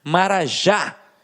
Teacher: o já é a última sílaba e ficou mais forte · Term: oxítona